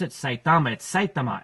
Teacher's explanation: Saitama I always pronounce it Saitama it's site to my accent accent is on the first syllable